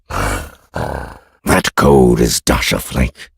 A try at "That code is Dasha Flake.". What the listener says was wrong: Maybe more emphasis on flake.